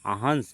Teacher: अनुस्वार लगा है क्योंकि हवा केवल नाक से निकलती है